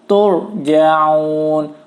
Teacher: Ro sukun sebelumnya baris dhamma maka dibaca tebal, bukan tur ya, tapi tur. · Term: ro tafkhim